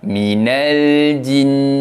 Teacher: Kena ingat huruf lam bukan di antara huruf qalqalah. Jangan dilantunkan sebutan huruf lam.